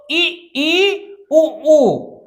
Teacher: ऐसे स्वर जिनके उच्चारण में कम मुख खुलता है। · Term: संवृत स्वर